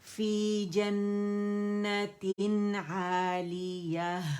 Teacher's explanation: جنة تین کیونکہ آگے عین ہمارے پاس آ رہا ہے تو بغیر غننے کے ہم نے نون کو ادا کرنا ہے ٹھیک ہے نون واضح ہوگا کلیئر ہوگا